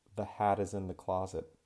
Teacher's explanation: Not a lot of people are going to say hat, hat, but if I say something like the hat is in the closet, then when I do that, I link the T over. It's not a very strong aspirated T. It's that flap T sound